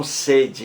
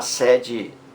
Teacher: então sede fechado sede aberto sons diferentes mas a mesma grafia as mesmas letras